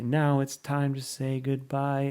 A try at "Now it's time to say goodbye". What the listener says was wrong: Yeah, but you're not saying it in tune,